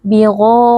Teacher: Ghain huruf tebal dibaca dengan mengangkat pangkal lidah